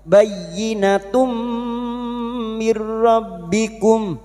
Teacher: Kum bayyinatum, bayyina masuk pada huruf ya yang bertasdid hanya masuk tanpa ditahan lama-lama, hanya masuk bayyinatum duma tanwin pada huruf ta marbuta ini. Bayyinatum duma tanwin bertemu mim idgham bi gunnah masuk dengan mendengung masuk pada huruf mim dan mendengung selama 3 harakat